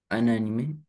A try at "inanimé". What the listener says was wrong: Inanimé. ne prononce pas un quant à ça. Quant à i. L'animé, inanimé, ouais. Inani- Inanimé, tu prononces pas un, tu dis in.